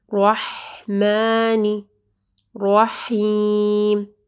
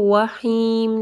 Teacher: بسملہ، بسم اللہ، بسم اللہ نہیں پڑھنا، ٹھیک ہے، بازر بی، بسمی، بسمی، سین کو جو ہے یہ رخوہ حرف ہے، ٹھیک ہے، تو تھوڑا ٹائم دینا ہے، بسم اللہ، رحمانی، رحمانی، را کو ہیوی پڑھنا ہے، ہا کو جو ہے واضح پڑھنا ہے گلے کے درمیانی حصے سے، رحمانی، رحیم، اس کو وحیم نہیں پڑھنا، ٹھیک ہے، رحیم، آپ کی را جو ہے وہ بالکل کلیئر ہونی چاہیے، رحیم۔